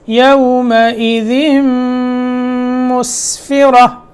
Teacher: ذال میم مشدد یہاں ادغام ہوگا غننے کے ساتھ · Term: ادغام غننے کے ساتھ